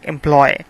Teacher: Employ, there are only two vowel sounds at the end. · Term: diphthong